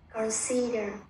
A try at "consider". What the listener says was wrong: Con là đọc thành consider đi bạn. Consider. Nó không phải âm o đâu nha, nó làm ơ, nó đọc thành con. Consider. Consider.